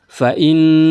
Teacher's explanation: ada nun nun tasydid. Berarti dia harus digunahkan didengungkan gunah musyaddadah.